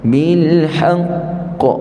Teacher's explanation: huruf Qalqalah yang ada sabdu kita berhenti pada Dia kena tahan dulu kemudian baru lantunkan dia